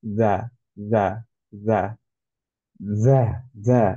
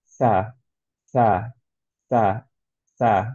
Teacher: এখন করব হচ্ছে যা, যা, যা, যা, যা, এরকম না, বাতাস যাতে না বের হয়, রাইট? যা, যা, ক্লিয়ার, জাহার, হুইসপারের মতো না। কিন্তু সাটা হচ্ছে হামস, হুইসপারের মতো। এর জন্য অ্যাকচুয়ালি এটা সা, সা, সা, সা, বাতাস বের হয়ে যাচ্ছে।